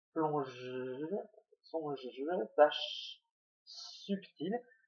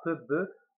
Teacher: les sons sont des sons qui laissent passer le souffle, contrairement à peu, be qui bloque l'air